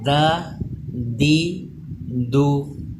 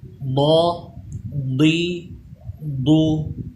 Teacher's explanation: دال کی آواز باریک رہے، ضاد کی آواز پر ہو جائے، یہ حروف مستعلیہ ہے۔